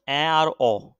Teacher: জীবের উচ্চতা অনুযায়ী নিম্ন মধ্য স্বরধ্বনি হচ্ছে অ্যা আর অ